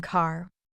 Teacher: even silent in Australian English it can sound similar say but in American English the r is much stronger